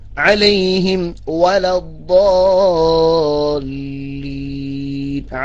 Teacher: അലൈഹിം വാ എന്ന് പറയുമ്പോൾ അലൈഹിം വാ അത് വരാതെ അവിടെ അലൈഹിം ചുണ്ട് ശരിക്കൊന്ന് പൂട്ടണം. അലൈഹിം എന്ന് ശരിക്ക് ചുണ്ട് പൂട്ടിയതിനു ശേഷം അത് മീമിനെ ശരിക്ക് വ്യക്തമായി ഉച്ചരിച്ചതിന് ശേഷം മാത്രമേ വ എന്ന് പറയാൻ പറ്റൂ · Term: ചുണ്ട് പൂട്ടണം